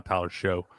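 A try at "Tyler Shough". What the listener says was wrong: Because it's spelled that way, but it's pronounced Shuck.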